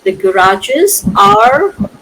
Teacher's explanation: I'm pronouncing the R at the end of the passage. So why am I pronouncing the R? Only because the next word is starting with a vowel. So the R before is pronounced.